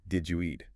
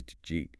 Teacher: Another classic example is, did you eat? Which often becomes just jeet.